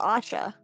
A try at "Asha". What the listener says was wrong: Is that the vowel you're going with here, my love? OSHA. It's OSHA, my love.